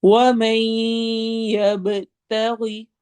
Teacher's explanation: تھوڑا، وَمَن يَبْتَغِ، وَمَن میں ہم نے ادغام غنہ کرنا ہے، یب با پہ قلقلہ ہوگا